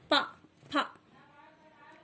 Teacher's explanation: पा वर्ग का भी उच्चारण स्थान होता है ओष्ठ